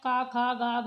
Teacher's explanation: का वर्ग जो होता है, जितने भी आते हैं, का, खा, गा, घा, यहाँ, ये सभी कंठ से उच्चारित होंगे